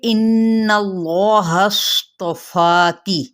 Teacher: नून मुशद्दद है तो इसलिए यहाँ पे गुन्ना यानी थोड़ी देर आवाज़ को ठहराना